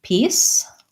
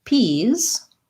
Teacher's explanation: and i have the same pronunciation for those and then p's only difference is i have the voiced z sound